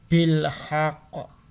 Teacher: Nah, ini bil haqq karena ini termasuk huruf qalqalah maka harus dipantulkan